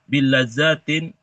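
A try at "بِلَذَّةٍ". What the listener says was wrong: za-nya nggak panjang kan? Nggak ada alif za-nya. Bilazzatin.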